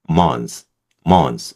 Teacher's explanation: 여기서 TH 발음을 안 해버립니다.